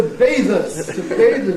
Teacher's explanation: the stress on the first syllable, of course